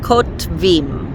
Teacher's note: it's not too difficult to say the t sound and then the v sound without putting a sound in between